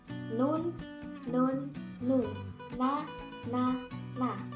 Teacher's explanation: Lidahnya ke depan sedikit dari huruf lam. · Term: huruf nun